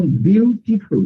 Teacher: এইখানে দেখেন, এখানে কিন্তু ট উচ্চারণ হচ্ছে না। এই যে ট এর সাথে আই আছে, এখানে টিটা খেয়াল করেন, টিটা কিন্তু ইউএস অ্যাকসেন্টের ডি হয়ে গেছে।